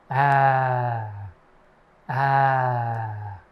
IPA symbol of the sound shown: æ